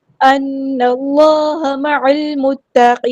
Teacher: عین کو ہم نے لام کے ساتھ ملا دینا ہے، حمزۃ الوصل ہمارا ڈراپ ہو جائے گا ، لام یہاں پر لام قمریہ ہے، اس کو ہم ظاہر